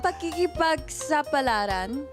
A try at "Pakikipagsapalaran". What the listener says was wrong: Almost there. Medyo bilisan mo lang ng konti. Pakikipagsapalaran. Parang the accent is on the sigh. Pakikipagsapalaran.